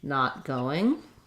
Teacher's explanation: I just use that stopped unreleased T